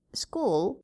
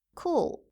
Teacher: Try comparing the k sound in school and cool. In school, it is unaspirated, whereas in cool, it is aspirated.